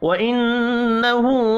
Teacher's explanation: ہا کے اوپر الٹا پیش ہے، ایک الف کے برابر کھینچ کر پڑھنا ہے